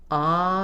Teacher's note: When we say ah, the tongue is low, the jaw is open, and there's space for the vowel sound to resonate all throughout the mouth.